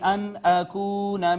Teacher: پھر نون ساکن کے بعد حرف اظہار حمزہ، یہاں اظہار کیا · حمزہ اس کا مخرج جو تھا وہ اقصی حلق، ہلکا سا تھوڑے سے جھٹکے سے ہم نے اس کو پڑھا